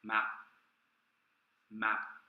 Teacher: Notice how I don't aspirate, I don't release any air at the end.